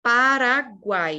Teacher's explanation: A gente tem aqui um tritongo, um encontro de 3 sons vocálicos na mesma sílaba. O U é uma semivogal, sempre nessa ordem. O A é a nossa vogal e o I é a semivogal.